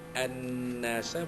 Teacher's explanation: Ra'aitan nasa, an-nasa, ya, alif lam syamsiyah, alif lam sabdu, an-nasa wajibul gunnah, ya, kerana nun itu bersyaddah bersabdu